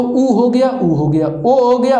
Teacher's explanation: ऐसा स्वर जिनका उच्चारण करते हैं तो हमारा जो ओठ होता है वो वृत्त के आकार का ले लेता है तो उसे वृत्तमुखी, और जो वृत्त के आकार का रूप नहीं ले पाता है उसे अवृत्तमुखी कहा जाता है।